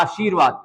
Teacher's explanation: पूरा र नहीं आ रहा आशीर्वाद र बहुत हल्के में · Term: रेफ